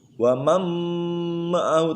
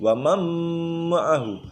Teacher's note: Nun matinya hilang, masuk kepada mim. Wamam ma'ahu tapi disertai dengan dengung. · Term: Idgham ma'a gunnah